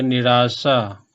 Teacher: तो निह का विसर्ग र बन गया, उसमें आ जुट गया तो रा हो गया